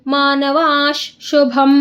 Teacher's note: ದೀರ್ಘಾಕ್ಷರದ ಮುಂದೆ ವಿಸರ್ಗ ಇದೆ, ಆಗ ಅದು ವಿಸರ್ಗದ ಮುಂದೆ ಶ ಇರೋದ್ರಿಂದ ಅರ್ಧ ಶ ಆಗುತ್ತೆ